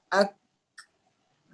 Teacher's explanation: Maka kalau kita matikan ak, kita akan rasa macam ditekan bahagian pangkal lidah tu ke atas, ke langit-langit. Ak, macam diangkat. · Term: kaf